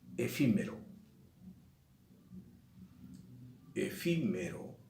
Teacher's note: Efímero lleva el acento, si yo lo escucho, lleva el acento en la sílaba antepenúltima. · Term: esdrújula